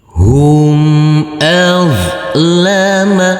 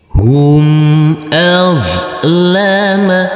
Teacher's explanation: Huruf zo yang bersukun ini tidak boleh dipantulkan karena ini bukan bacaan qalqalah.